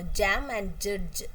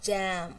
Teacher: When we pronounce jam, we feel that the vocal chords are vibrating. So, it's a voiced sound. It's Again, it's palato-alveolar because the tongue touches both the hard palate and the tooth ridge. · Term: palato-alveolar affricates